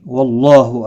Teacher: اللہ کا لام زبر کی وجہ سے پر پڑھا جائے گا ، اس کے اوپر کھڑی زبر بھی ہے، ایک الف کی